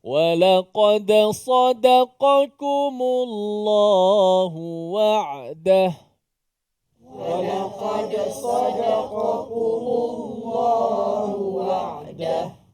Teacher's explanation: Tekan sikit suara pada apa? Pada waw